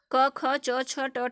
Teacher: उच्चारण में स्वर तंत्रियों में गूंज उत्पन्न नहीं होती, वे अघोष हैं। ठीक, जिनमें घोष नहीं होती।